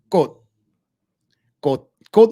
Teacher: it's halfway between a K and a G, and it's pronounced with like a glottal stop. So it's not a G, it's not a K, it's a K.